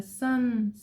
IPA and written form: sʌn (the sun)